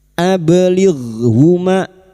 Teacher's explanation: Huruf gin sukun. Hati-hati jangan dipantulkan ya. Bukan qalqalah.